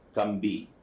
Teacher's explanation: after the m sound they're saying actually b, but they think they're saying p.